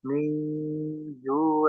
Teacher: At'amahum min ju, nun sukun ketemu jim ikhfa disamarkan nun sukunnya mendekati makhraj huruf jim. Mingju, dan ada gunnah.